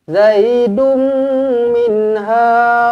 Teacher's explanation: Jumpa dengan mim sabdu, tak payah fikir banyak. Terus rapatkan bibir, dengungkan dua harakat. Idgham al-gunnah di sini.